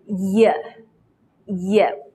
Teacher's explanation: let the center part of your tongue touch the hard palate and let the air out to produce the sound from the vocal cords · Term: voiced consonant sound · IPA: /j/